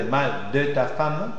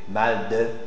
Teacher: tu mets le E muet complet, sans parenthèse, parce que la consonne qui précède, c'est une consonne occlusive. PTK, BDG. Mal de.